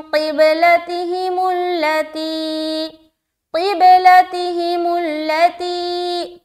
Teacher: تی میں کیوں پریشر ڈال کے کھینچ رہے ہیں ایک الف؟ کیونکہ یہاں پر یا ساکین اور اس سے پہلے زیر ہے۔ لتی، لتی، لام کو جلد کیونکہ زبر ہے، تی میں کھینچیں گے کیونکہ یہاں پر یا مدہ ہے۔